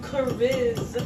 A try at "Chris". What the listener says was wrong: It's Chris, No, you said Chris. There's no A. Chris.